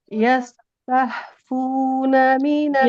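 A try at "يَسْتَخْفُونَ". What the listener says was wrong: Tidak tah, nanti jadi ha. Tafuna. Kho, dia di tenggorokan ujung. Yastafuna, tidak tah. Kho, tapi nggak boleh terlalu kho ya. Tidak. Nah, tidak terlalu seperti itu. Yastafuna.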